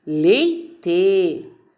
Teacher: Leite. A sílaba tônica é o lei.